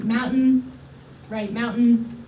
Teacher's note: your T just sort of goes up and stays there or what's going on with mountain is you get a glottal stop so the plot is is the space between your vocal folds